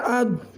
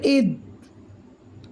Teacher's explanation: ضاد کو ہم نے موٹا کر کے گونج کے ساتھ پڑھا، کیونکہ ضاد حروف مستعلیہ میں سے ہے اور موٹا ہے